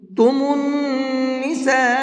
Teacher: اس نون کے اندر غنہ کریں گے، اس لیے کہ نون کے اوپر تشدید ہے، اور نون کے اوپر تشدید ہوتی ہے تو غنہ کر کے پڑھتے ہیں۔